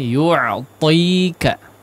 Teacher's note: Ti-nya di situ 2 harakat ya, agak dipanjangkan